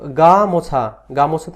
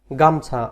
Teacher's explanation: ময়ে যে ওকার ছিল, এই ওকারটি কিন্তু এখানে নেই। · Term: মধ্যস্বর লোপ